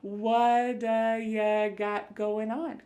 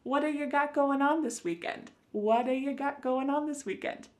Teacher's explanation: that T at the end of the word what is going to change to a D sound. This is really typical of American English where a T that's surrounded by vowel sounds is going to change to a D. It's called a flapped T and it just kind of uh rolls off your tongue in a smooth way.